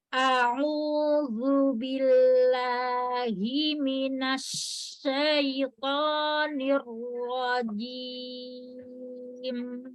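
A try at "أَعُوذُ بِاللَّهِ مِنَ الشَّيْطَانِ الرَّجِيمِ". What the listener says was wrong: Sudah bagus, lamnya sudah nggak ngangkat.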